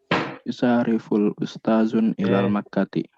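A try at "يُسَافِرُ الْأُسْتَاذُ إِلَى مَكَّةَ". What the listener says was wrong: Kebalik, Le. Yusafiru bukan yufasiru.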